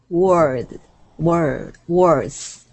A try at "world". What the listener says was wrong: It sounds like worst or word, so world. Lud, lud at the end. There's a little lud at the end. World. l is a problem for you because it's not l, but it's world.